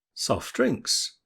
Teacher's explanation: Put them together and we can hear that the t in soft has gone. This is because it's impossible to say the t sound followed by a d sound without a gap. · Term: elision